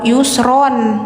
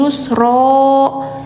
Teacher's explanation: Inna ma'al usri yusro. Nah ini bacanya N-nya ilangin, jadi nggak yusron tapi yusro, karena di sini posisinya di akhir kalimat. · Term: mad iwad